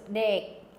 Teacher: the K is not even pronounced